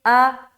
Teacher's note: حمزہ کے اوپر زبر کی حرکت ہے، زبر کو جلدی پڑھیں تھوڑا بھی نہ کھینچے